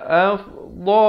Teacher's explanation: dha makhrajnya di tepi lidah. Tepi lidah kita ini dha.